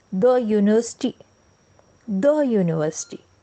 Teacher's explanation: Consonant sound जैसे द यूनिवर्सिटी, द यूनिवर्सिटी। वैसे ये शुरू यू से हो रही है, पर यू साउंड नहीं, य का साउंड है यहाँ पर, य की ध्वनि है, इसलिए द यूनिवर्सिटी।